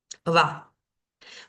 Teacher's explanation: Y en cuanto a la va, cuando está al inicio de una palabra, va a sonar siempre como una B corta, suavecita, como con la boca un poquito abierta, ¿no? Como va.